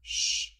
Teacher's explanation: made with the tongue raised further back towards the hard palate behind the alveolar Ridge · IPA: [ʃ]